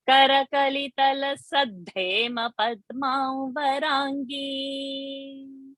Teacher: When the Ta and the Ha are coming, Tas become Da and the Ha will become Dha.